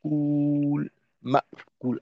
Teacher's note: উ কে তিন আলিফ লম্বা করে শেষে লামে যাব